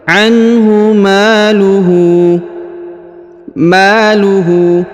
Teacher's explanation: huruf Ma dibaca panjang dua harakat karena di depannya terdapat Alif